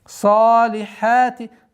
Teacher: Обратите внимание, чтобы ха, гортанный звук, полноценным образом произнесли. Салихати. Потом, после произношения ха с фатхой, долгота в размере двух огласовок.